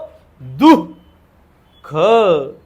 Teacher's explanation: या विसर्गाचा उच्चार ह या वर्णाला झटका दिल्यासारखा होतो. परंतु या ठिकाणी लक्षात घ्यायचं, हला झटका द्यायचा आहे, पण विसर्गाच्या मागे कोणता स्वर आला तो पाहायचा.